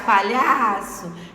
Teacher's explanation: o lhá é a penúltima sílaba, que é a sílaba tônica, a sílaba forte. Então, essa palavra é paroxítona.